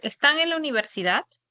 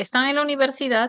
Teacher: Por ejemplo, si dices, están en la universidad, tiene inflexión tonal ascendente y está planteando una pregunta. Pero si se dice, están en la universidad, se convierte en una afirmación.